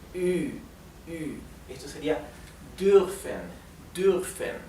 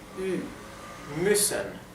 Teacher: la U con umlaut se pronuncia entre una I y una U. Es un sonido intermedio de los dos, de una I y una U